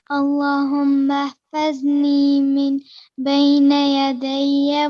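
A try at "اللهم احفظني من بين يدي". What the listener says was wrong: جو نون آ رہا ہے اس کی کسرہ کو آپ نے ذرا صحیح شارپ کرنا ہے، من بینی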